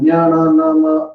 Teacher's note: ಜ್ಞಾನ ನಾಮ ಅಂತ ಹೇಳಿದ್ರೆ ನಾವು ಮೂಗಿಂದ ಧ್ವನಿ ಬರುತ್ತೆ, ಹಾಗಾಗಿ ಅದನ್ನ ಅನುನಾಸಿಕ ಅಂತ ಕರಿತೇವೆ.